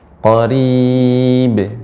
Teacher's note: Qalqalahnya tidak boleh ada hamzah, tidak tertahan dengan hamzah